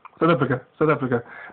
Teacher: You'll notice that in South Africa, a lot of the vowels are very quick.